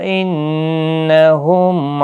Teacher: نون مشدد پر غنہ ہوگا. میم ساکن کے بعد عین آیا ہے، اظہار شفوی ہوگا